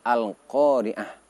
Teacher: huruf tak marbutoh diganti terlebih dahulu menjadi huruf ha, barulah disukun. Jadi Al-Qari'atu kita baca menjadi Al-Qari'ah.